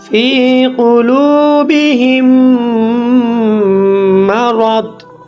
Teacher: মিম সাকিনের পরে যদি মিম আসে তাহলে ইদগাম ও গুন্না করে পড়তে হয়।